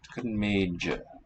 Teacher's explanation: Note the voicing of cha to ja.